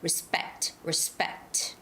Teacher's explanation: know ethics it's ethics ethics it's the first syllable stress and respect this is a second syllable stress